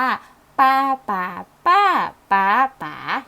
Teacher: มีการไล่ระดับหรือแบบเสียงต่ำขึ้นไปหาเสียงสูง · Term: เสียงวรรณยุกต์